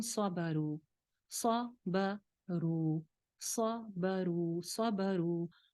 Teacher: انہم صبروا، صبروا، صبروا، صبروا، صاد موٹا ہے، با باریک ہے، را ایک الف لمبی ہو جائے گی کیونکہ واو مدہ ہے